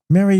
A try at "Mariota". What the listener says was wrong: They kept pronouncing the last T. Marota. Mariota. It's Mariota. Just just slur through the last T.